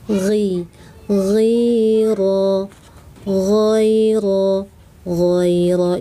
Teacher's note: gho ujung tenggorokan, gho kental, tafkhim, angkat seluruh lidah